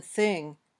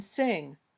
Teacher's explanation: your tongue touches the bottom edge of your top teeth or it might stick out a little bit between your teeth then the air comes out gently it's a voiceless sound